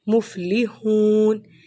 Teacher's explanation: ہا کی آواز حلق سے